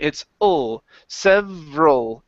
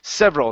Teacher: Even though this ends with an AL, we don't want to say several and pronounce an ah sound. It's ul